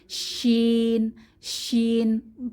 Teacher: জিহ্বার মধ্যভাগ তার বরাবর উপরের তালুর সঙ্গে লাগিয়ে জিম উচ্চারণ করেছি সেইম ভাবে শিন শিন প্রচন্ড বাতাস থাকবে মুখে